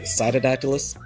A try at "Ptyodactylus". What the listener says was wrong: The P is silent. It's just Ptyodactylus. Ptyodactylus. Ptyodactylus. I mean, you can say Tyo, you can say T-O, either way. The P, anytime the P comes before like a weird letter, like Tenepus, like the little barking geckos, P is silent, straight to the T.